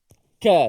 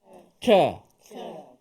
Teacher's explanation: Yang mana huruf kaf di pangkal lidah.